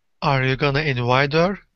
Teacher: so the last two words invite her become one word and join